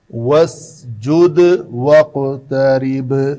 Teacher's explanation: 3 قلقلہ ہے، دال، قاف اور با